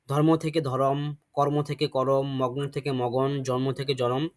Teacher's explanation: যুক্তবর্ণ ভেঙে গিয়ে তার মধ্যে কিন্তু স্বরধ্বনির আগম হয়েছে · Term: স্বরভক্তি